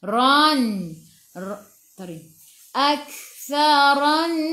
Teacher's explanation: ra baca dengan tebal, ra baris atas